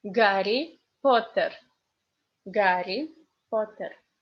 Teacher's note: And another funny example is Harry Potter, because in English you say H, in Russian you say G